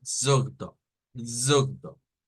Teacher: el sonido para esta no es con O, aunque se escribe con O, pero el sonido no es con O, es con una U al final y lo debemos hacer como zugdo, zugdo, ugh, ugh.